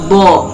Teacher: Makhrajul huruf dod terletak pada salah satu atau dua pinggir lidah, beradu dengan salah satu atau dua geraham atas yang kiri atau kanan ataupun keduanya. Sedangkan sifatul huruf dod terdiri dari 6 sifat, yaitu jahar, nafas ditahan.